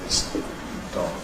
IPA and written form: ðɪs ˈd̥ɒg̥ (this dog)